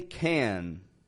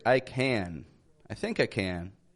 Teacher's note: when we say can we stretch that n out at the end of the word